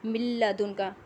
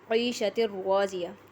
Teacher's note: اس میں آواز ناک کی ہڈی میں نہیں جا رہی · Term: ادغام بلا غنہ